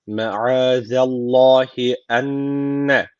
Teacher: Allah lafzı burada kalın okunması gerekiyor. Çünkü öncesindeki harfin harekesi üstte. Yani Allah lafzına üstten giriş yapılıyor.